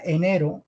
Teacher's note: enero es una r suave no es una vez fuerte es una r común y corrientes es de acento neutrones de